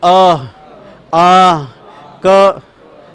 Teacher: ये भैया ये वर्ण कंठ से बोले जाते हैं · इन वर्णों का उच्चारण स्थान कंठ होता है।